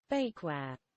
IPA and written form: ˈbeɪkwɛə (bakeware)